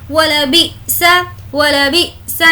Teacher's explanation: यहाँ पर हमें झटका देना है क्योंकि हमज़ा साकिन के पढ़ने में झटका होता है